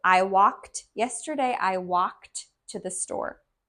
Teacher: the ending of walked t is a d, but it sounds like a t